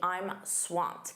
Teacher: Notice that pronunciation, that ED is a soft T.